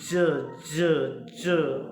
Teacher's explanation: जो उसका उच्चारण होता है व ज ज ज ठीक है दांतों से सट करके घसीट है आवाज उसकी